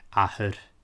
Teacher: And this is common between vowels or often at the end of words as well. Particularly the broad ch is often reduced to just a h.